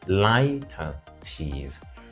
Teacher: So in the British pronunciation, it is stressed on the second syllable, litotes. In the American pronunciation, it is stressed on the first syllable